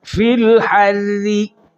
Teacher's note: अब चूँकि रा के नीचे कसरा पढ़ेंगे तो बारीक हो जाएगी, और रा पर वक़फ़ करेंगे तो कसरा ख़त्म हो जाएगी, रा मा क़बल के मुताज हो जाएगी, तो रा से पहले फ़तह आ जाएगी, फिर रा मोटी हो जाएगी।